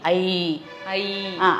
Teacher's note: அது நீண்ட ஓசையுடைய எழுத்து. அதனால அது சொல்லும் பொழுது பின்னாக்கு கடிக்கும்.